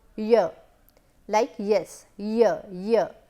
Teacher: the tip of the tongue is not used here, you can understand that only the middle part of the tongue is actually raising up. It is not the tip of the tongue like retroflex sound where we produce sound like r. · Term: palatal